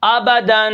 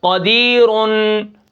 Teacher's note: نون تنوین لکھنے میں 2 زبر 2 زیر 2 پیش لکھا ہوتا ہے، لیکن نون تنوین پڑھنے میں آتا ہے، نون کی آواز آخر میں آتی ہے